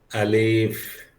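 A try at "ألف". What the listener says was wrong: এক নম্বর আলিফ কেন টানবো একদম দ্রুত আলিফ আলিফ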